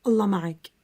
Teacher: the L in Allah sounds more deep. So it's like a dark L, sometimes called a velar L.